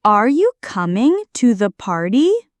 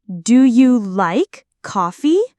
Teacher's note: Yes/no questions, rising intonation. Your voice goes up at the end.